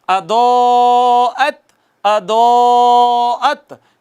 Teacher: مد متصل ہے. مد متصل. اس پہ طول ہوتا ہے. اس پہ کیا ہوتا ہے؟ 4 سے 5 الف کھینچتے ہیں